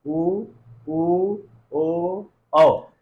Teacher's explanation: जिह्वा के पश्य भाग से इनका उच्चारण होता है।